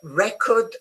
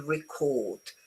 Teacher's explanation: if it's a noun, remember the stress is the beginning. If it's a verb, it goes towards the second syllable